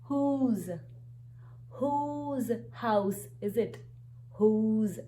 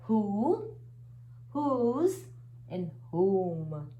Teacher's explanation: w h is followed by o so no sound of w we have only the sound of h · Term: h sound